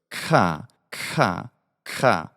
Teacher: An affricate is that initial, in this case, a velar ka, followed by cha. It's sort of the combination of the two.